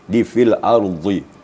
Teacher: suaranya melontar ke tepi lidah kanan atau kiri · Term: huruf dhad